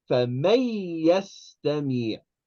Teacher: So in this case, this ya is going to completely eat up the noon. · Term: idgham